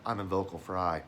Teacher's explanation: If he's down and below his standard range, he'll drop in what's a register called vocal fry. And you hear that little rattle.